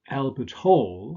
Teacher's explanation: Albert Hall, stress on the second element.